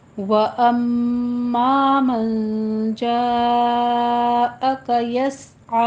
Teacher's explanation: अम में गुन्ने वाजिबा करना है · जा अक मद्दे मुत्तसिल वाजिब है, यहाँ पे 5 काउंट करना है